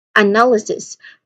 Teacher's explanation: We start with the schwa sound. So the first syllable is the schwa sound. Keep it short and unstressed.